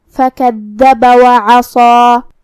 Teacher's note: کلمت فَكَذَّبَ میں یہاں حرف الدال ہے. دال کو ہم زبان کی سر اور اوپر والے دانتوں کے اندرونی کناروں سے ادا کریں گے اور اسے دو حرف کے برابر پڑھیں گے، کیونکہ اس پہ تشدید ہے، اور تشدید کی اصلیت دو حرف ہوتی ہے.